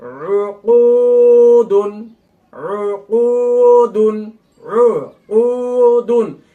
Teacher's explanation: এখানে সবগুলোতেই ঠোঁট গোল হবে, কেননা সব জায়গায় পেশ রয়েছে।